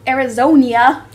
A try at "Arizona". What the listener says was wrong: No, Arizona. There's no I before the A.